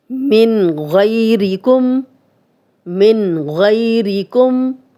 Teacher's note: من جزم والا نون آگے غین آ گیا ہم غنہ نہیں کرے.